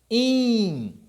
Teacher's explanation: você vai ver esse in como um I nasalizado